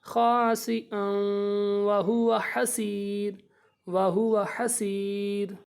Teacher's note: دو زبروں کے بعد جب واو آتی ہے اس پہ شد ہو تو اس پہ گنہ کر دیں، ان ناک میں آواز لے جائیں گے